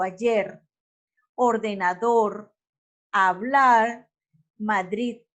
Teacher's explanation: Las agudas, cuando el acento fonético recae sobre la última sílaba.